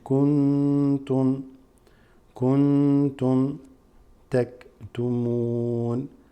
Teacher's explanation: Noon has a sukoon over followed by ta, which is ikhfa, meaning you read kuntum taktumun.